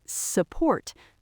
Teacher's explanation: The U becomes a lazy uh sound.